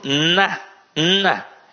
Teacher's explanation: ele é nasalizado o som também sai pela narina